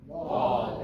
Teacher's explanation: Don't diphthong it. Just say wall.